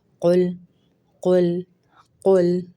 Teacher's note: قل قاف کو ہم موٹا کریں گے اور لام کو باریک کریں گے۔ بعض اوقات آپ قاف کو موٹا کرنے کے چکروں میں لام کو بھی موٹا کر دیتے ہیں، تو لام کو نہیں کرنا۔